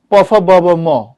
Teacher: ওষ্ঠ ব্যঞ্জন বলতে কি বুঝো, ওষ্ঠ মানে কি ঠোঁট, তো ঠোঁটে কোন বর্ণগুলো উচ্চারিত হয়, প ফ ব ব ম, আচ্ছা এগুলো ঠোঁটে হয়, এগুলো নাম ওষ্ঠ ব্যঞ্জন